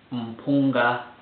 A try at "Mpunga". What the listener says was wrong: The M shouldn't come out so pronounced. A lot of English people will tend to go Mpunga. Just Mpunga.